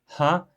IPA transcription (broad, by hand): hə